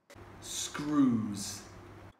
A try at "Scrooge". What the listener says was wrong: We can hear here that the Korean speaker is having trouble pronouncing the J sound, and it's coming out as Z. So both words sound almost identical as screws from the Korean speaker. However, it should be a clear distinction between the sounds Scrooge and screws.